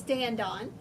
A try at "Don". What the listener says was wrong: It's pronounced Dawn. Even though it looks like Dan.